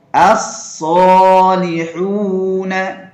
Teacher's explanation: As-Salihuna. Jadi ketika membaca shad itu harus tebal